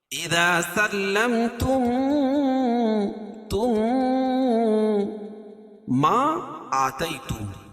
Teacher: میم ساکن کے بعد میم آئے تو ادغام شفوی، یعنی میم کا میم میں ادغام ہوگا، اور اس کو ادغام مثلین کہیں گے، کیونکہ دونوں مخرج اور صفات کے حساب سے دونوں ایک ہی حرف ہے.